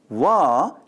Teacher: W is vised leviod dental approximate in telugu produced by bringing the upper teeth close to the lower lip with free air flow and vibrating vocal cords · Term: voiced labiodental approximant